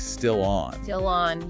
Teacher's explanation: that L sound at the end of still tends to just flow right into the vowel sound of on. Yeah. It can almost sound like still on.